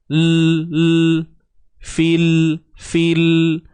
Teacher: Jangan kita cepat sangat melepaskan hujung lidah kita ni daripada langit. Kan huruf lam ni hujung lidah akan naik ke langit